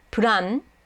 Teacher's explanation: If you say it quickly enough, the u kind of disappears.